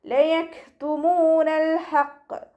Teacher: മീമിൻ്റെ കൂടെ വൗമദ് വന്നു, 2 കൗണ്ട് നീട്ടിക്കൊടുക്കുക